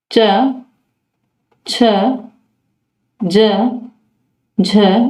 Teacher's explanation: चय वर्ग तालव्य में होता है